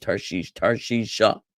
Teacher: the kamat vowel the sound is part of the suffix it goes together with the he it's an a sound at the end of the word